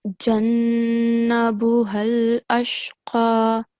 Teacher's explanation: Don't forget to make the nasal sound, qunna, on the noon mushaddad